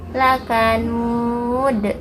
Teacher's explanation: Kalau yang di akhir ayat itu qalqalah kubro, pantulannya besar karena huruf qalqalahnya bukan sukun asli.